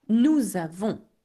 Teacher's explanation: I do the liaison here because avons begins with a vowel